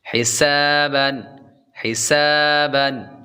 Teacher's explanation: سین کے بعد الف حروف مدہ ہے اس لیے لمبا کریں گے، اور سین حروف صفیریہ یعنی سیٹی والے حروف میں سے ہے تو اس لیے جب بھی سین کو پڑھیں گے تو سیٹی کی آواز آئے گی